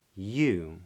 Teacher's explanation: So you starts with a yod, where the tongue is up in the middle of the mouth. Yeah, and then it releases into an oo vowel where the lips round.